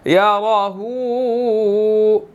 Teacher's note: ہا کے اوپر الٹا پیش بھی ہے اور چھوٹی مد بھی ہے. اس کو 2 to 3 سیکنڈ جو ہے وہ ہم نے لمبا کرنا ہے